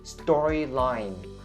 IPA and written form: ˈstɔː-ri-laɪn (storyline)